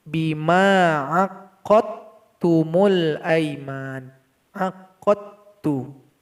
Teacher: huruf dal yang berharokat sukun berjumpa dengan huruf ta. Di sini tidak ada qalqalah. Jadi langsung kita baca huruf qaf yang fathah kepada huruf ta yang bertasydid.